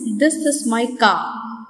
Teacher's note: In the spelling of the word car, it is written properly, but the consonant R remains silent in the sentence, this is my car.